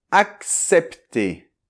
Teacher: Attention dans la deuxième syllabe, le CEP, le E [ɛ] est ouvert